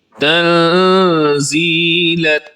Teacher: یعنی نون ساکن کی آواز کو آپ ناک میں چھپا کر پڑھتے ہیں، اور اس کی مقدار ایک الف کے برابر ہوتی ہے، یعنی ایک کھلی انگلی کو بند کرنے میں جتنی دیر لگتی ہے اتنی دیر آپ اخفا کرتے ہیں۔